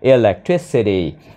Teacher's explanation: Nhấn vào âm tiết thứ ba